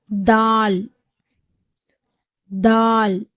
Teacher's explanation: தால் தால் உடைய மகர்ப் பிறப்பிடம் வந்து தா உடைய மகரட்ச் பிறப்பிடம் மாதிரியே நாவினுடைய நுனி மேற்பல்லுடைய வேர்ல படும்பொழுது தால் என்ற உச்சரிப்பு வந்து பிறக்கப்படுகிறது